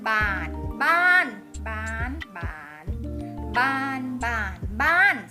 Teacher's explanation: คำว่าบ้านรูปวรรณยุกต์คือรูปโทรูปวรรณยุกต์คือรูปโทอักษรกลางนะคะบอไบไม้คืออักษรกลางคำว่าบ้านคือคำเป็นรูปโทเสียงก็ต้องเป็นเสียงโทเห็นไหมคะ อักษรกลางคำเป็นตรงรูปตรงเสียงเป็นรูปโทเสียงก็เป็นเสียงโท